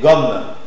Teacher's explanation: Consonne orale, occlusive, vélaire, sonore.